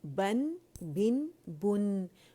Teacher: جو نون آخر میں آ رہا ہے اس کی گونج کو، یعنی جو اس کا جو غنہ ہے اس کو فیل کریں